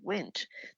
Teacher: the N, when I'm saying it, is just a nasal sound that isn't really very easy to hear